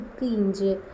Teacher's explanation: இவ்விரு மெய்களும் இடைநா நடு அன்னம். ஃபஸ்ட்டு முதற்பகுதி அன்னம், இது இடைநா நடு அன்னம்.